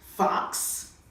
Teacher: The X is actually on the end of the word. So when you say fox, you make the sound of K kissing the S